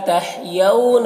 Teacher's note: یہاں پر واو لینے سے نرم آواز کے ساتھ جلد پڑھیں گے